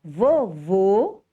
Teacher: Quando o circunflexo é usado, ele faz com que o som da vogal seja emitido de forma fechada.